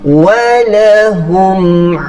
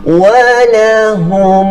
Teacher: Bila ada getaran dalam hidung bermaksud itu dengung. Okey, jadi pastikan hidung kita tidak bergetar. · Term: tidak didengung